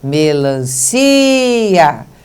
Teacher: Quando a gente faz quando fala melancia, veja, melancia, nós vimos que o som da sílaba si é bem forte